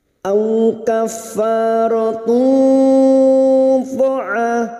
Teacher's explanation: Di sini kita wasol, maka dumat tanwin pada tak marbuto ini, dumat tanwin bertemu po, namanya ikhfa hakiki. Kita samarkan dumat tanwin dan mendengung selama 3 harokat. Au kaffaratu fa'a, huruf ain fathah diikuti alif 2 harokat mad tabi'i.